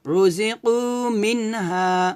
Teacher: মিন স্পষ্ট হবে, গুণ করা যাবে না, কারণ নুন সেকেন্ডের পর ইজারের হরফ হা আসছে, এজন্য রোজি কু মিন হা।